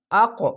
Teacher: যাবে আর এই তিনটি নিচে সাউন্ড আসবে কফের উপরে সাকিন এখানে কফের উপরে সাকিন তার জন্য ধাক্কা মেরে উপরে সাউন্ড যাবে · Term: কলকলা